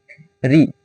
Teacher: इसका उच्चारण मूर्धा से होता है। इसे मूर्धनीय वर्ग भी कहते हैं।